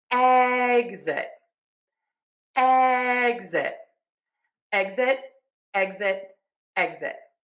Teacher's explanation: So, for egg-zit, we are going to end syllable number two with zit. That Z is voiced, so your voice box is on and moving · we are going to keep the voice back box on and we are going to say GZ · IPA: /ˈɛgzɪt/